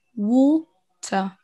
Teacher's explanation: on n'entend pas de r